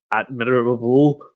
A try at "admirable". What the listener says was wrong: No, you just mispronounced all the vowels.